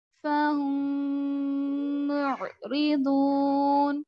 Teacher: میم ساکن کے بعد میم تو غنہ کریں گے. میم ساکن دیکھنا ہے، شرط میم ساکن کی ہے صرف میم کی نہیں ہے. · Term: ادغام شفوی